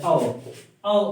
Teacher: जो कंठ्योष्ठ, कंठ और ओष्ठ से बोले जाए, ये औ है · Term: कंठोष्ठ